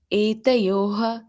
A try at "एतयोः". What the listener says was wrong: Okay, Mataji, the Visarga is having problem. You are telling the full ha.